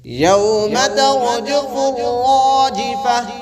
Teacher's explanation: گول تا پہ ہا کی آواز نکالتے ہیں جب وقف کرنا ہو